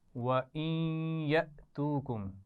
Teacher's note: وَإِن يَأْتُوكُمْ، نون ساکن کو یا سے ملائیں گے تو غنہ بھی کریں گے